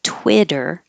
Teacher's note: quitter has the I vowel so your tongue should be a little lower if your tongue is too high it will sound like the